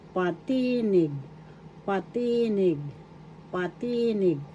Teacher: Second syllable is where the accent is, so that's how you pronounce it.